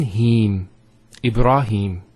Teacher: so here is the elongation of the e sound